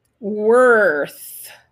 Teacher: Techniquement, vous faites passer très légèrement, enfin, pas très légèrement, vous faites passer votre langue entre les dents du haut et les dents du bas sans que ça touche. Vos cordes vocales ne doivent pas vibrer. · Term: voiceless